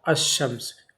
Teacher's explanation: تو وہ لام نہیں پڑھا جائے گا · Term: حروف شمسی